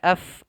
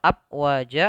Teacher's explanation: Fa-nya ini harus ada angin yang keluar atau nafas yang dikeluarkan dari rongga mulut kita, maka af tidak dibaca dengan p atau ap wajah atau dengan bacaan ap wajah dengan ba dan sebagainya.